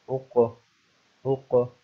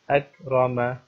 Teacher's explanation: اس قاف کو جب میں پڑھ رہا ہوں تو اس کی آواز جو ہے وہ اٹھ رہی ہے واپس، جیسے اق۔ اور جو دوسرا کاف ہے جس کے اوپر نقطے نہیں ہوتے تو اس کو جب آپ پڑھیں گے تو اس کی آواز اٹھتی نہیں ہے، اس کی آواز کے اوپر آپ رک جاتے ہیں، جیسے اکرم۔ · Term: قلقلہ